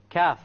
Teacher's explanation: you're using the part of the tongue which follows the qaf, right after the qaf. And you connect this area with the hard palate.